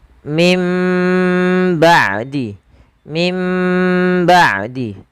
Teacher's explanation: Yang satu dengan furjah, yang satu dengan idbaq. Tapi kita lebih mengambil yang idbaq, yaitu bacaan yang dia bibir kita rapat seutuhnya.